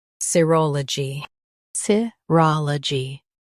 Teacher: S, roll, G, serology. Stress ro in US, ROL in UK.